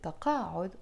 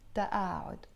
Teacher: And we don't pronounce it taqa'ud, although in standard Arabic they pronounce it taqa'ud. In the Lebanese dialect we pronounce the qaf as a hamza sound, and we will pronounce it ta'a'ud.